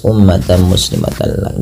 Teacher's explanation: Lafal umma di sini memnya berharokat tasydid dan berwarna hijau, artinya ia bacaan gunnah dan perlu ditahan dalam pelafalannya ya. Umma tidak langsung dilepas, ummatan muslimatan, dan ini kita kenal dengan bacaan gunnah.